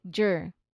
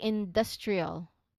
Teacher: It's a clean D and R, okay? It should be clean, not J, okay? It should be a clean D and R transition. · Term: DR blend